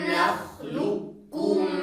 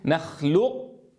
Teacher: القاف ذاتا وصفة تذوب في الكاف وننطق بكاف واحدة مشددة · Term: إدغام كامل